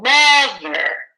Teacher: louder and higher right mother we don't say mother mother right it's not at the same pitch it's mother right it jumps up slightly